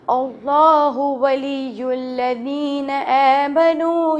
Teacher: اب یہاں پہ اللہ موٹا پڑھیں گے، ولی الذین میں پھر بتاؤں گی، ذال باہر نکال کے پڑھیں گے